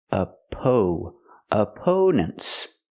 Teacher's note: we use a long o sound like no and go for the second syllable oppo opponents and the last syllable is relaxed n opponents.